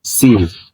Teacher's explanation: When you pronounce sin, the tip of the tongue is close to the inner surface of the lower front teeth, and the blade of the tongue is near the hard palate, roof of the mouth, without touching it. Air is directed along the groove of the tongue, creating a sharp, hissing sound.